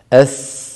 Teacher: الصفحه ليس فوق بل اسفلها اس اس اس س سال سائل وهو حرف فيه صفير والصفير من صفات القوه اس ولولا الصفير الذي فيه لكان حرفا ضعيفا لكن الصفير يقويه